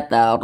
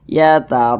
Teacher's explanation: huruf ro yang memiliki tanda baca fathah ya dibaca takhim dibaca tebal